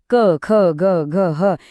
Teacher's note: क ख ग घ हे ध्वनी थेट कंठातून येतात म्हणून त्यांना कंठ म्हणतात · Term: कंठ्य